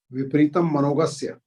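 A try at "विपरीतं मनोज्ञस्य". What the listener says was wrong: हाँ, मनोगस्य नहीं है, मनोज्ञस्य है। मनोगस्य बोल दिया था, मनोगस्य मनोज्ञस्य, ज्ञा यानी का।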